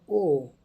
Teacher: ओ का जो उच्चारण स्थान होता है दोस्तों, कंठ और ओठ दोनों से होता है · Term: कंठोष्ठम